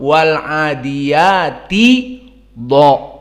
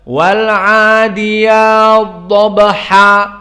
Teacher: dipanjangkan oleh qiraah As-Susi an Abi Amr dan langsung ditasdidkan dha-nya. Maka dibaca wal adiyat dhabha. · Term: idgham al-kabir